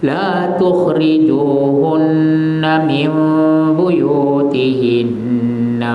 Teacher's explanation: nun yang mati bertemu dengan ba, huruf iqlab satu saja, ba, ya, ditukarkan nun itu menjadi mim.